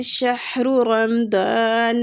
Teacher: ہا سینے والی سائڈ مطلب کہ اقص الحلق سے ادا ہوتی ہے